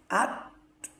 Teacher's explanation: তা উচ্চারণ হয় যেহবার আগা সামনের উপরের দুই দাঁতের গোড়ার সাথে লাগাইয়া তা উচ্চারিত হয় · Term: তা হরফের মাখরাজ